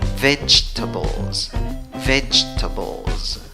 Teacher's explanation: Al final de la palabra va una S, en la pronunciación va una Z.